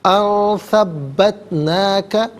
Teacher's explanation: نون ساکن کو اخفا کے ساتھ پڑھیں گے۔ اخفا کہتے ہیں ناک میں آواز لے جا کر گنگنانا۔ ان ثبتناک، با مشدد ہے، جماؤ کے ساتھ پڑھا جائے گا۔